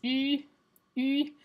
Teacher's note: it's the exact same E sound, but the only thing that's different is that you're rounding your lips